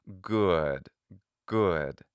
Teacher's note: it's a rounded vowel but then it becomes unrounded